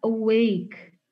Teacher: kata awake ini berarti dia terdapat stress syllable-nya di second syllable. Nah, berarti kita bisa bilang bahwa ini adalah weak syllable dan ini adalah stress syllable.